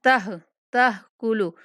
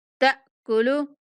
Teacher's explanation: ہا کی آواز بھی نہیں آنی چاہیے، ٹھیک حمزہ کی آواز آنی چاہیے